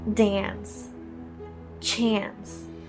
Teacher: the Americans, this A sound is very nasal. It's extremely nasal. Use your nose to pronounce the A sounds.